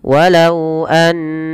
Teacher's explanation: hukum berupa kita namakan dengan bacaan namanya gunah gunah gunah Artinya kita memasukkan suara bunyi huruf itu kepada rongga hidung kita dan dia menahan suara n ya maka tatkala kita melafalkan annahum jangan langsung dilepas suara nunnya